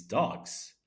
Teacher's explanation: the plural of dog is dogs, where the S sound is pronounced like a Z